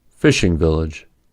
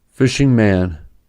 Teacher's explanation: the gerund combination is single-stressed with the gerund being stressed, while the participle combination is double-stressed where the primary stress goes to the noun